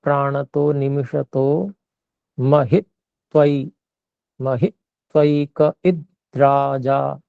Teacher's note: तो जहां पर ई है, ह में जो ई है और इद्राजा में जो ई है, इसको हमें थोड़ा सा गुरु करना पड़ेगा क्योंकि आगे संयोग है